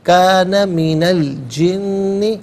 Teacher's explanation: من ان پر زبر ہے، اس سے الجن کی لام ساکن کے ساتھ ملائیں گے، درمیان میں سے الف یعنی حمزہ کو حذف کریں گے. کانا من الجن، فا علیحدہ، فسقا علیحدہ ملا کر پڑھیں گے.